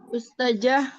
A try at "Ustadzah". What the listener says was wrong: Ustazah, jangan pakai jim Umi. Ustazah, pakai zal